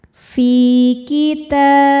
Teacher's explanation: Fi mad tabi'i dhahiri sebab ada ya sukun sebelumnya kasrah, cara bacanya panjang 2 harokat.